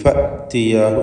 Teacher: ഹംസ ഷിദ്ദ എന്ന സിഫത്തുള്ള അക്ഷരമാണ്, ഷിദ്ദത്തിൻ്റെ ഹർഫാണ്. അതുകൊണ്ട് കടുപ്പത്തിൽ ഫഅ്തിയാഹു എന്ന് പറയണം.